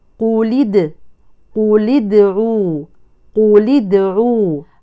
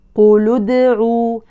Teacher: حرك اللام بالكسر للتخلص من التقاء الساكنين بين كلمتين